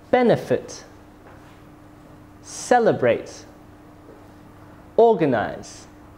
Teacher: Did you hear that the stress was put on the first syllables?